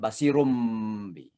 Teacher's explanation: suara nun basirun itu menjadi seolah-olah mim, basirum bi, ya. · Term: iklab